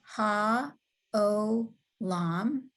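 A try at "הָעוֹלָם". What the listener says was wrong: Good, good. Olam is the world.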